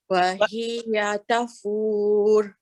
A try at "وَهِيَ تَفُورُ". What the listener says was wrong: Let's try that again. The ra here is heavy when we stop.